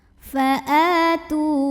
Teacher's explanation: hamzah yang barisnya fathah panjang. Maka kita bunyikan panjang, a-nya ini 2 harokat saja. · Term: mad badal